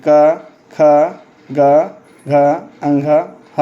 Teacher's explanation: क ख ग घ अंग और ह एवं विसर्ग इनका उच्चारण स्थान कंठ है